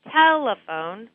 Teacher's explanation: So as I'm saying telephone, I will pull on the rubber band for tel and then reduce the other syllables, the phone, so I'm not saying them as clearly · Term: stressed syllable